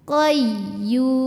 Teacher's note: maka ini kita nabarkan juga kita agak bentak sedikit [Musik] Qayyum Yu monyong bibirnya karena harakatnya damah · Yu monyong bibirnya karena harokatnya dhammah. Kemudian ini kalau berhenti boleh sampai 6 panjangnya.